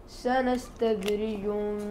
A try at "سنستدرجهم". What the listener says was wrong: زيد الغنة في الإدغام. سنستدرجهم،